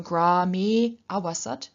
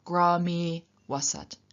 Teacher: the e or the o remain the same, and the a is dropped in pronunciation, but still represented in writing by means of the avagraha symbol, which in Devanagari looks basically like a capital S, and in transliteration usually is represented by an apostrophe.